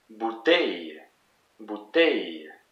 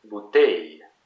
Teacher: Bouteille. So there's two syllables in this word, bou and teille, and it's the last one that is the most emphasized